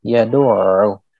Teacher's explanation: huruf ain di sini bertasydid. Jadi suara ain itu tidak terputus. Suara ainnya masih mengalir.